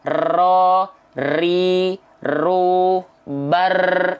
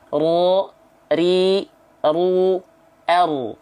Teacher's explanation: Takrir itu artinya dia bergetar, tapi tidak banyak-banyak, sedikit saja. Ya, berbeda dengan huruf R.